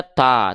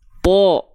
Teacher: Huruf to ketika fathah nggak dibaca ta, tapi dibacanya to, terdengar seperti vokal O. Kenapa? Karena huruf to termasuk ke dalam huruf yang tebal.